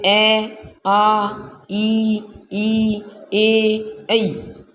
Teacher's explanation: और जो अवृत्ताकार होते हैं उसकी आकृति बोलते समय होठों की आकृति है वो चपटी हो जाती है